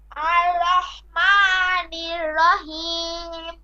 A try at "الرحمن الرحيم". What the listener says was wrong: হ্যাঁ এই আরটা আপনার সরাসরি আর না উচ্চারণ হয়ে অনেক সময় আর মানে আরটা কেমন যেন একটা শোনা যাচ্ছে সেজন্য আমি কয়েকবার করে এটা বলে দিলাম আর রহমানির রহিম হা নির রহিম